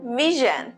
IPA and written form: ˈvɪʒ.ən (vision)